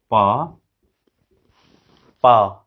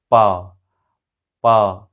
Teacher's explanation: हम एयर को दोनों होठ से रोक दिए हैं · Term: बाइलेबियल